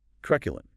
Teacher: Stress on the first syllable. Truculent, 3 syllables.